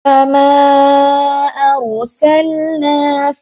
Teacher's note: mad jaiz munfasil yang panjangnya 4 harokat karena ini adalah mad yang bertemu dengan hamzah